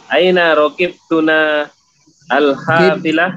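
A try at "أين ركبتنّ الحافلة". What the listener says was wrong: Tunna. Nonnya ditasdid. Raqibtunna.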